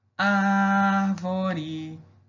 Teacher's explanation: Eu demorei mais no ar.